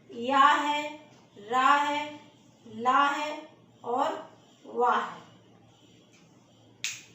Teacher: ये 4 व्यंजन जो है वो अंतस्थ है। या तालव्य है, रा मूर्धन है, ला दंत है और वा दंत प्लस ओष्ठ से बोला जाता है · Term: अंतस्थ व्यंजन